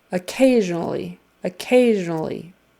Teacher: for this one the accent is on the second syllable occasionally occasionally and that s in the middle is a z